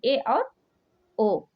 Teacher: अन्य विकल्पों में यानी अर्ध संवृत इन स्वरों में उच्चारण में मुख द्वार कम संकरा होता है।